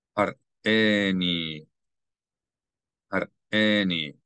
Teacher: You need to hear the sound of aleph as a glottal stop, because there's a vowel associated with the aleph.